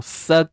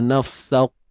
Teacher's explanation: Kaf tu lembut je, tak perlu tebal-tebal. Nafsak. Nanti jadi macam huruf qaf pula.